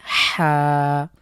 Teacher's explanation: কন্ঠের মাঝখান থেকে চাপ দিয়ে